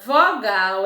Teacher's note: palavra vogal é uma dissílaba porque só possui duas sílabas e é uma oxítona pois a sílaba tônica é o gal